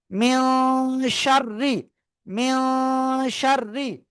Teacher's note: গুণনা করে পড়তে হবে। ইনসাইড নোজ, অনুস্বারের মতো উচ্চারণ হবে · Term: ইকফা